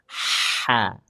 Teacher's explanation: huruf ha disempitkan tenggorokan tengahnya dipaksa keluar anginnya